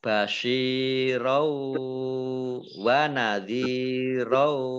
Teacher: Basyirau shin kasroh ya sukun mat tobi'i panjang 2 harokat. Fathah tanwin bertemu dengan huruf wawu, bacaan idgham bi gunnah, idgham masuk bi dengan gunnah mendengung, yaitu mendengung wawu.